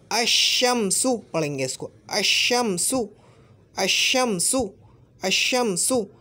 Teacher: ये शीन से बदल जाएगा और ये जो शीन है ये मुशद्दद हो जाएगा।